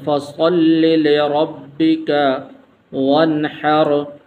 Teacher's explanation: را کے اوپر زبر ہے تو اس لیے اس را کو بھی پر کر کے پڑھیں گے، موٹا کر کے پڑھیں گے